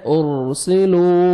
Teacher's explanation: را ساکن سے پہلے پیش ہے، آپ نے را کو پر کرنا ہے · پہلے پیش ہے، آپ نے را کو پر کرنا ہے، ارسلو، واو مدہ 1 سیکنڈ لام کو کھینچنا ہے